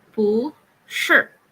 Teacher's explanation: but since sure here we have it as fourth intonation thus instead of using the fourth intonation we use the second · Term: second intonation